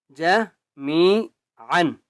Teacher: میم کو ایک الف کی مقدار کھینچ کر پڑھیں گے